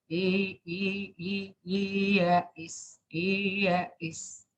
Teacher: Kalau tasil itu antara hamzah dan ya. Karena harokatnya kasroh.